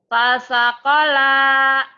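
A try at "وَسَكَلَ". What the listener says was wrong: Wa. Wa dibaca wa. Wa dibaca pa ketuker-tuker. Itu wa. Bukan fa. Wasakola.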